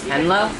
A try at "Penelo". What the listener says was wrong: Penelo. There's another E in there. A lot of people forget that second E, but it's there.